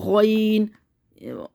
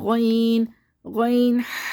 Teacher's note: شین میں تفشی ہوگی، منہ کے اندر آواز پھیلے گی، غین، غین میں موٹا کر کے پڑھنا ہے، غین، ہونٹوں کو ہلانا نہیں ہے